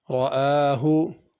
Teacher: حمزہ کے اوپر کھڑی زبر ہے، اس کو الف کی طرح پڑھنا ہے کھینچ کے